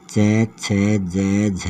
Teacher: इसमें जो हवा है वो तालु के टकराकर बाहर निकलती है। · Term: तालव्य स्पर्श व्यंजन